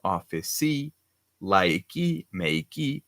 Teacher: they say E at the end of the phrase, like office, like, make